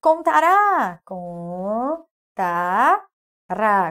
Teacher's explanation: a sílaba que se alonga é o ra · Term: oxítona